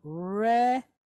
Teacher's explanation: Then we have a resh, pointed sere, long duration E type vowel.